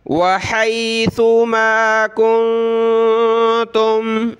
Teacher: نون colourful ہے یہاں پہ یعنی اس پہ ہم نے ناک میں آواز پیدا کرنی ہے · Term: اخفا